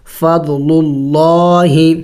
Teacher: للہ. تو یہاں پہ لفظ اللہ سے پہلے پیش ہے تو ہم لفظ اللہ کو موٹا پڑھیں گے